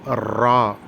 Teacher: நாக்கு சற்று உதரல் கொண்டு ரா என்று கூற வேண்டும்